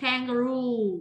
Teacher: Âm trọng âm rơi vào ru